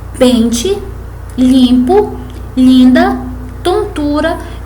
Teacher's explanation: A única função do M e do N é indicar que a vogal é nasal. Não representam, portanto, outro som. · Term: dígrafos vocálicos nasais